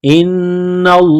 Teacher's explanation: है ब अमरे इल्ला हमजा को नून के साथ मिलाना है नून मुसद है गुन्ना करेंगे आवाज नाक में छुपाए